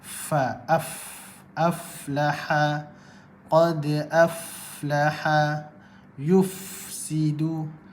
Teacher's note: Dan perut bibir bawah pula tu, perut bibir bawah pun bahagian dalam, okey, dalam bibir dalam tu. So bibir bawah temu ke hujung gigi kecap atas. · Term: huruf fa